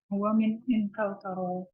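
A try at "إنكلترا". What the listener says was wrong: Jangan sampai lupa. Ra-nya tasydid.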